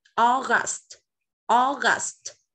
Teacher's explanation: Âm kết thúc bằng âm t, thì con phải bật âm t lên nhá